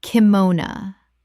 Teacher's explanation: Three syllables with the final o reduced to uh in English speech.